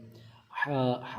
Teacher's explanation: حا کو حلق کے درمیان والے حصے سے ادا کریں گے